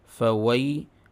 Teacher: یا ساکن سے پہلے زبر یا لین، اس کی آواز بالکل معروف ادا ہونی چاہیے